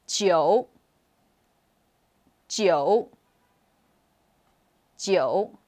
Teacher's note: number 9 is the third tone down up tone